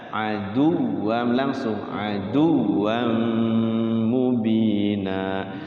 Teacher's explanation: Nah, aduwam itu tasydidnya enggak ditahan-tahan.